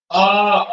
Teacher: उच्चारण करते समय ओठ जो है ये गोलाकार नहीं होता है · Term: अवृत्त मुखी स्वर